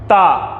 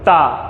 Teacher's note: तो जीभ ता आवाज निकलने से ठीक पहले दांत को छू रही है